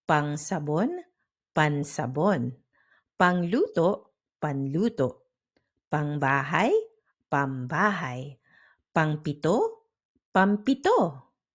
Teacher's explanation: Next, we have ng to n or m.